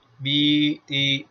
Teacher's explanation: تالو اور زبان کے خلا سے یا مدہ نکلتی ہے، اور یہ تیر بنا رکھا ہے جہاں پر وہیں سے نکلتی ہے.